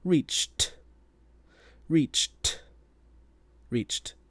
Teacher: if it has that ch sound at the end, then it will have a voiceless t sound with the ed like reach becomes reached.